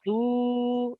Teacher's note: Wau madda because before it, you have a Dhamma. That Dhamma stretches it for 2 seconds.